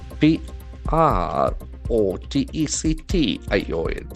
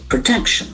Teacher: that second syllable is very much pronounced in a higher level